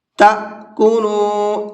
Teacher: تو اب یہ حمزہ ہے، اب اس کے پڑھنے میں فرق ہو جاتا ہے۔ حمزہ جب ساکن ہوتا ہے تو اس کو جھٹکے کے ساتھ میں پڑھا جاتا ہے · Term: حمزہ ساکن